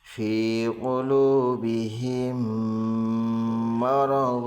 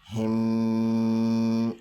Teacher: میم ساکن کے بعد میم ہے اس لیے میم کو میم سے ملا کر گنہ کے ساتھ پڑھیں گے۔ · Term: ادغام شفوی